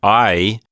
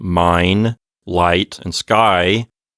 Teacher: it sounds like the vowel sound in mine light and sky you can hear me gliding from one vowel sound to the next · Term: diphthong